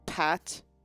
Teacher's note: there should be like the puff of air